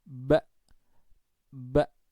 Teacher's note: ketika kita membaca Hamzah mati maka pita suaranya itu terkatup jadi dari buka kemudian terkatup